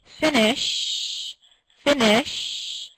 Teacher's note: So if you are saying offer, you have your hand on your throat and you say offer, you can feel your vocal cords vibrating. If you say finish, finish, your vocal cords stop vibrating when you get to the sh sound.